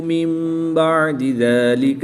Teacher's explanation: نون ساکن کے بعد حرف با ہے تو یہاں پر اقلاب ہوگا